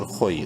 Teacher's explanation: خو کو منہ بھر کے پڑھنا ہے لیکن شارٹ کر کے